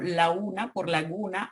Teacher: Pérdida de la oclusiva velar sonora en posición intervocálica